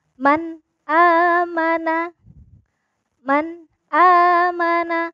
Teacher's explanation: cara bacanya izhar adalah jelas tidak boleh samar maupun tidak boleh dengung